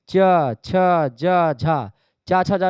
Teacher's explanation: बोलने में क्या होता है तालू का प्रयोग होता है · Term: तालव्य ध्वनियां